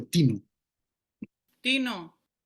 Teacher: Este ejemplo de Tino Tino Y aquí vemos como la subida la subida inicial está truncada se empieza directamente desde un tono mucho más alto